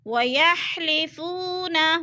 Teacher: وَيَحْلِفُونَ، وہ ساکن سے پہلے فا کے اوپر زبر ہے تو وہ مدہ، وہ مدہ کو 1 الف 2 حرکات کے برابر ہم نے لمبا کر کے پڑھنا ہے